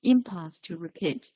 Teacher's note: the stress is on the first syllable impulse